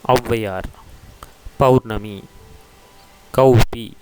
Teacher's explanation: ஔவையார், பௌர்ணமி, கௌபி இவ்வாறான சொற்களில் ஔகாரம் இடம்பெறுவதை அவதானிக்கலாம். அங்கே ஔகாரமானது ஒரு மாத்திரையாகவே ஔகார குறுக்கமாகவே ஒலிக்கும்